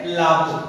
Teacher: অলাভুর অ ধ্বনিটা লুপ্ত হয়ে হয়েছে লাভু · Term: আদি স্বরলোপ